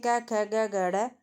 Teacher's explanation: कंठ से बोले जाते हैं। उच्चारण स्थान इनका कंठ रहता है भाई।